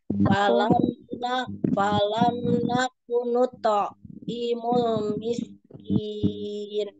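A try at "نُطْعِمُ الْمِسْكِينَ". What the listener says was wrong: Tapi notonya jangan putus ya Umi. Dipantulin tohnya. Nuto'i mul miskin.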